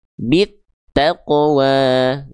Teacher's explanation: Cara bacanya dari bi ini langsung dimasukkan ke huruf ta-nya. Bit gitu. Karena yang ada tanda syamsiah atau tasydidnya adalah huruf ta-nya, ya. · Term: alif lam syamsiah